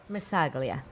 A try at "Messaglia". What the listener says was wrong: Nope. Messalia. You don't say the G. You don't.